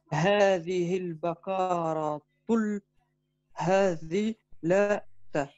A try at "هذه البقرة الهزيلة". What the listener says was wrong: Non, hazilatu. Ici, ça reste tout en ou. Il n'y a pas de raison que ça passe en un. هذه البقرة الهزيلة.